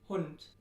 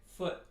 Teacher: In American English, the lip rounding is really weak, so we say foot or good. But in German, we say Hund. So if you watch my mouth, Hund, and then I say foot, the lip rounding is different.